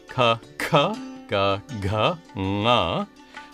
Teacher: Next come the consonants, which are organized according to their place of articulation, starting with the gutturals at the back of the throat